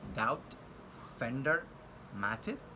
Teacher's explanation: D, which is a voiced alveolar stop sound